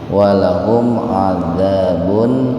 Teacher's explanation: Walahum idhar safawi, mimati ketemu ain secara terpisah. Jadi mimnya itu dibaca idhar, dibaca jelas. tahan 2 ketukan itu Pak, karena mim mati ketemu ainnya terpisah.